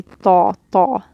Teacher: So these two combinations mean that whole tongue is up. The back of the tongue is up to make it heavy. · So that characteristic of this letter, where you push it against the top of your mouth, so the whole tongue is raised to the top of the roof of your mouth and then pulled away. That is adhesion.